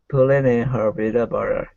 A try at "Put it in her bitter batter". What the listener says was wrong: Bitter batter. Be a little more open for this ah. Ah sound like an apple. Batter.